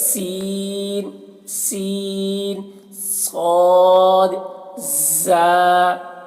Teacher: तीनों को जब अदा करते हैं तो उसकी आवाज में एक सीटी की जैसी आवाज सीटी की जैसी आवाज निकलती है · सीन की आवाज पतली हो रही है सा की आवाज मोटी हो रही है जा की आवाज बुलंद हो रही है तीनों का मखर एक ही है तो इसको अच्छे से याद